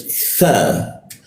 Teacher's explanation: nah huruf tha di lidahnya digigit ya